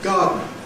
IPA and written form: ˈgɑːdn̩ (garden)